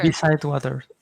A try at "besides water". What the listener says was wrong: One more time, besides. Let me hear the S. Besides water.